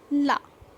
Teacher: उच्चारण करते समय दांतों की जड़ों में हमारी टंग लगती है और उसमें क्या होता है? उसके साइड से हवा निकल जाती है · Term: पार्श्व व्यंजन